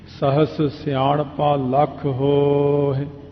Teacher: ਹੋ ਲੰਮਾ ਕਰ ਲਓ, ਹਾਏ ਦੀ ਸਿਹਾਰੀ ਆਪਣੇ ਆਪ ਹੀ ਬੋਲ ਜਾਂਦੀ ਹੈ, ਉਹਨੂੰ ਕਹਿਣ ਦੀ ਲੋੜ ਨਹੀਂ ਪੈਂਦੀ। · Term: ਦੀਰਘ ਅੱਖਰ